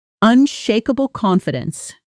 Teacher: Unshakable confidence naturally blends together. The final L sound of unshakable almost touching the C of confidence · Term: connected speech